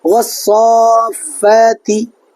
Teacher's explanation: تو یہاں یہ صاد پر حرف مدہ ہے، یعنی کھڑا زبر ہے، اس کے بعد والے حرف پر تشدید ہے، تو یہاں مد لازمی قاعدہ اس لیے پایا جا رہا ہے کہ حرف مدہ کے بعد والے حرف پر تشدید ہے، تو اس کو بھی 4 الف کھینچ کر پڑھیں گے